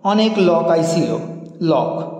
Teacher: ঝাড়খন্ডি উপভাষায় ওকারের স্থানে অকারের উচ্চারণ লক্ষ্য করা যায়